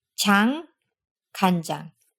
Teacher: that N at the end of the first syllable turns our unvoiced ch sound into j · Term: rule of voicing